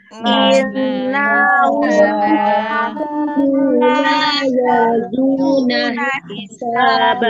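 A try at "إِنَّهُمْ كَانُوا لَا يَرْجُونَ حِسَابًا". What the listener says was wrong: Oke, nahnya jangan dipanjangin ya. Ingat, tidak ada fathah, tidak ada alif di belakangnya, maka tidak boleh dipanjangin gitu ya.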